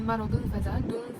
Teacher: Yang kedua saya gariskan maradun fazadun fa, itu adalah ikhfa sebab huruf dot berharakat dhammah tanwin bertemu dengan huruf fa. Cara bacanya adalah sama dengan dengung dan ditahan selama 3 harakat.